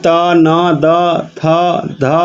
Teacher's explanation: त, न, द, थ, ध ये दंत है